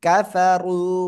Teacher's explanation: র উপরে পেশ মোটা আওয়াজে পড়তে হবে